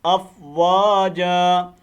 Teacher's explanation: یہاں وقف کریں، دو زبر کی تنوین کو الف مدہ سے بدل دیں